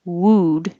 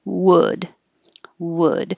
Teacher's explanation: we have to round for the w and then you have to unround them if you keep your lips rounded wooed it'll sound wrong so